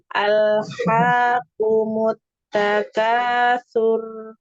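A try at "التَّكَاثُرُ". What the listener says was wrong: Nah, jadi yang ngalir itu bukan sur apanya getarannya ya, bukan getarannya tapi suaranya aja. Mutakatsur, sur ya, cuma suara. Nah, barakallahu fiik yang dilatih ya, huruf ro-nya ya, ukhti ya.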